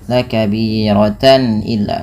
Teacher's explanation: suara tannya dibaca dengan jelas karena adanya tanwin bertemu dengan huruf hamzah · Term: izhar halqi